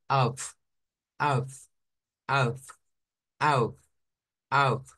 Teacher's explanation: misma manera vea la f se gesticula con con ese movimiento rozamiento entre el labio inferior y los dientes superiores